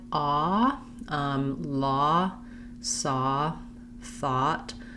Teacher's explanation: we have the vowel ah which is a rounded open back vowel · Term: vowel aw